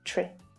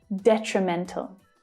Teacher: But the second syllable is the most difficult here because of the consonant cluster tr, with an unstressed vowel sound, tree. So it's like the noun tree, but with a shorter, weaker vowel sound, tree.